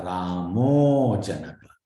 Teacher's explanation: But if it is followed by a soft, where the cha changes to ja in the next example, cha, a hard cha has become a soft ja. So Ramaha Janakaha becomes a Ramo Janaka.